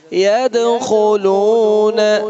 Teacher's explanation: دال پر قلقلہ ہے، خا کو موٹا پڑھنا ہے، لو کو لمبا کرنا ہے واو ساکن کی وجہ سے